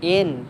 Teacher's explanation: gunnah musyaddah dengung tahan 2 harakat